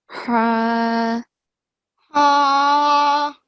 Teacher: the big ha, and the sound comes from middle of the throat.